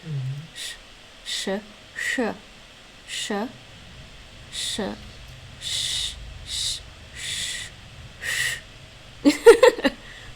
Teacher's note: Those sh sounds aren't really in English at all. in English, our normal sh sound isn't palatalized or retroflexed, right? No. It's more flat. Like the tongue is more flat.